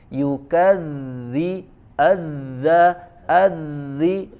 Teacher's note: dia suaranya mengalir ya, tapi tidak dengan angin atau nafasnya ya, tertahan nafas atau anginnya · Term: huruf dzal